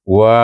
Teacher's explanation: di situ wa bila baris atas Dah tentu bunyinya wa tetapi ada Alif kecil kita panjangkan bunyi wa itu